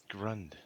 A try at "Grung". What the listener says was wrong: No, Grung with the G.